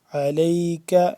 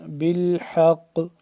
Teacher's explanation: علیک کاف یہ والا باریک اور آگے یہ والا قاف موٹا